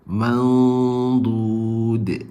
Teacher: So nun mati bertemu dengan dad, dia kena tebal, naik pangkal lidah. Dia mandud, gitu.